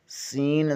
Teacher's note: زبان کی نوک ثنائے سفلی یعنی نیچے والے دو دانتوں سے لگے تو سین ادا ہوتا ہے